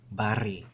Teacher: When you're gonna pronounce the R's, it is trilled and rolled. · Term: rhotic r sound